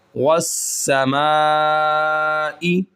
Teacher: الف مدہ کے بعد اگر حمزہ اسی کلمہ کے اندر ہو تو ہم 4 الف کے برابر کھینچ کر پڑھیں گے